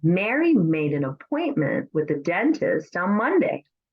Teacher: the Articles and and the are not so pronounced and prepositions like with or on are also not that strong